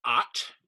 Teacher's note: So the first letter is ot, and it's a long A. So it's as always is in Psalm or Father. This sort of wide open sound.